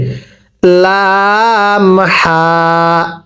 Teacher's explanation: লাম হাটা উচ্চারণের সময় গলার মাঝখান থেকে বাতাস বের হবে